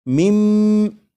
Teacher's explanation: جب نون ساکن کے بعد میم ہے تو اس نون ساکن کو میم میں ادغام کر کے پڑھیں گے، ملا کر پڑھیں گے · تو یہاں پر یہ جو من ہے اس کا جو نون ساکن ہے، جب نون ساکن کو میم میں ادغام کریں گے تو نون ساکن کی آواز پھر نہیں آئے گی، بلکہ میم کے بعد میم کی آواز آئے گی، اور یہاں پر غنہ بھی کریں گے